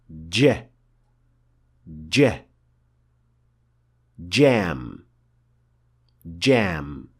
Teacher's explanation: The letter jim is a plosive sound, which means that there is a little gush of air released when pronouncing it. If that trait is ignored, which is a very common mistake even among Arabs, then the letter will not be properly pronounced.